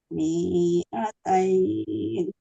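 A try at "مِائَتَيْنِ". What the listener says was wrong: mi'atain mi-nya tidak panjang mi-nya mi-nya tidak panjang Ibu mi-nya tidak panjang mi'atain bukan kalau harokat kasroh kalau panjang ada ya mati Mi'atain.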